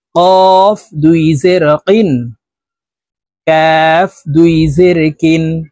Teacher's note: গোড়া তার বরাবর উপরের তালুর সঙ্গে লাগাইয়া উচ্চারণ করতে হবে আর কাফ হরফের উচ্চারণ জিহ্বার গোড়া থেকে একটু আগে বাড়িয়ে উচ্চারণ করতে হবে · কফ হরফ জিহ্বার গোড়া তার বরাবর উপরের তালুর সঙ্গে লাগাইয়া উচ্চারণ করতে হবে আর কাফ হরফের উচ্চারণ জিহ্বার গোড়া থেকে একটু আগে বাড়িয়ে উচ্চারণ